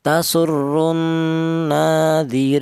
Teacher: boleh dibaca tawas artinya sedang yaitu dua alif atau empat harakat